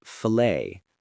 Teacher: filet has a silent t in many accents. That alone can confuse people.